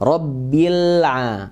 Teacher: kalau disambung dengan sebelumnya robbillah alifnya tidak baca cuma langsung ke lam sukun dan hukumnya Alif Lam Qomariah lamnya dibaca jelas Lam udah kita